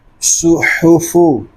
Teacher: صاد کو پر پڑھیں گے، ہا حلق کے درمیان والے حصے سے ادا کریں گے